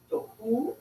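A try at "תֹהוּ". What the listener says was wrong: Tohu, good.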